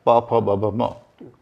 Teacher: हिंदी वर्णमाला में जो 5 वर्ग हैं, 5वां वर्ग है प फ ब भ म। तो ये पांचों ध्वनियां जो हैं दोनों होंठों के मिलने से बनती हैं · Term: बाइलेबियल